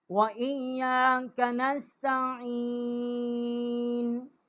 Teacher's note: عین جو ہے یہ وسط حلق سے اس کا مخرج ہے